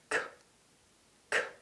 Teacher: this gives the sound its technical name, the voiceless velar plosive. Obviously, in real conversation, we don't produce the g sound first, but you can use this trick to find the correct mouth position. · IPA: /k/